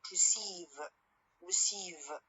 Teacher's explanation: when i say for example the word receive receive i stress the last part or the last syllable of this word